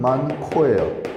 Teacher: 기역하고 히읗하고 합쳐져서 키읔이 됐습니다. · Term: 격음화